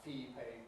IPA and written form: ˈfiː ₒpeɪ ɪŋ (fee-paying)